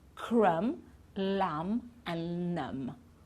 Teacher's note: we don't pronounce the b at the end